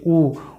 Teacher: मुह का जो ओठ है गोल होता है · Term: वृत्त मुखी